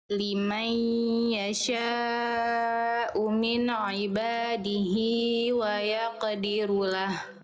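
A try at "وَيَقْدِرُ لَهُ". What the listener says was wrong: Itu wq lagi ya. Nanti dilatih berarti qof sukunnya dia dilafalkan kurang tebal ya.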